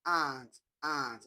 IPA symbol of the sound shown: ɑː